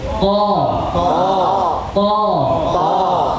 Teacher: Ujung lidah bertemu dengan gusi atas. To. Rahang tetap terbuka.